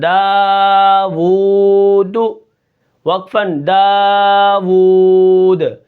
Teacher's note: آخر میں جو وقف ہے وہ ہے وقف بالاسکان، یعنی جو ساکن پہلے سے نہ ہو اس کو ساکن کرنا. اور داوود آخر میں جو آواز ہلی ہے اس کو قلقلہ کہتے ہیں